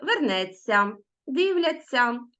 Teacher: у дієсловах на ця вимовляється звук ць він подовжений і м'який